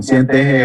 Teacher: Digamos que no hablan como yo, que por ejemplo a veces yo aspiro la S